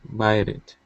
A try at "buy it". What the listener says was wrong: Okay, all right, so let's practice Buy it. Here, at the end of the word buy, you added a D sound, saying buyed it. These two words are buy it. Buy it.